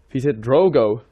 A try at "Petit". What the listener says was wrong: yeah, you don't actually pronounce the T. I believe so. The thing is, my French is still kind of rusty, but I believe so, like Petit Drogo.